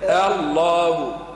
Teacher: رق الهمزة اللي بدينا بها الكلمة الله